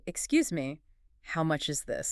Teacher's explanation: So you drop the pitch at the end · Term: falling intonation